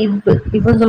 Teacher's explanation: கீழ் இதழும் மேல்வாய் பல்லும்